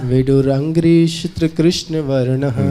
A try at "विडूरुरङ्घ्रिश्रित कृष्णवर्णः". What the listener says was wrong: विडूरुरंग। देखिए इसका जो टेस्ट है वो रुरु बोलने में अलग होता है। रुरु छोड़ दिया आपने। विडूरुरंघ्रि। हाँ हाँ, विडूरुरंघ्रि।